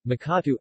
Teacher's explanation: T, voiceless unaspirated alveolar plosive environment, syllable initial.